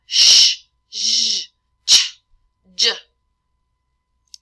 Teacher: we have our palatal, where the tongue touches the palate, for our sh, zh, ch, j